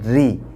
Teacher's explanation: Number 1, जिस रा पर ज़ेर हो तो वो रा बारीक होगी। बारीक का मतलब होता है सिंपल अदा होगी, यानी रॉ ऐसे मोटा नहीं होगा बल्कि पतला होगा, जैसे रा ज़ेर री।